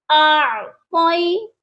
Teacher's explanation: اب یہاں دیکھیے یا جو ہے یہ یا لین ہے، یا ساکن سے پہلے زبر ہے، اسی لیے ہم نے اس کو بنا کھینچے پڑھنا ہے، بڑا نرمی سے اس کو پڑھنا ہے۔